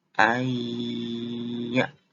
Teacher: Membaca dengungnya di lembut tahan 2 ketukan. Jadi nggak langsung ayyaf, ayya. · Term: idgham bigunah